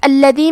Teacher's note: کلمت الذی میں لام کی تشدید کو ظاہر کریں گے اور اسے دو حرف کے برابر پڑھیں گے، یا پہ مد کا علامہ ہے، یہ مد جائز منفصل ہے تو ہم اپنی آواز 2 سے 4 مد کے برابر لمبی کریں گے۔